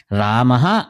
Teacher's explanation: ఇందులోని హ అన్న ధ్వని పూర్తిగా కాకుండా తేలికగా పలకాలి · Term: విసర్గ